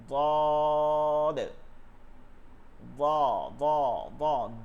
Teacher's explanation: সদ সদ। বদ, বদের যে মাখরাজটা আছে বদ, বদ, দদ হচ্ছে জিব্বার গোড়ার কিনারা, অর্থাৎ ভিতরের দিকে উপরের দাঁতের গোড়াতে লাগবে, মানে জিব্বাটা উপর দিকে উঠে যাবে, সব থেকে মোটা উচ্চারণ এবং নরম